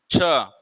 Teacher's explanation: जो छ है इसका उच्चारण स्थान क्या है तालू है इसको बोल कर के भी देख सकते हैं जैसे बोलिए छ · तो छा है, इसका उच्चारण स्थान क्या है? तालु है। इसको बोल करके भी देख सकते हैं, जैसे बोलिए छ, केवल छ बोलने में ही आपको आ रहा है तालु है, और इन तीन विकल्पों को बोलने में तालु को स्पर्श नहीं कर रहे हैं, तो उत्तर ऐसे ही सही हो जाएगा।